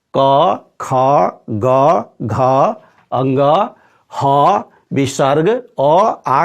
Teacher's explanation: जब हम क, ख, ग, घ, अंग, ह, विसर्ग अ, आ का उच्चारण करेंगे तो जिह्वा कंठ को स्पर्श करती है, छूती है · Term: कंठ वर्ण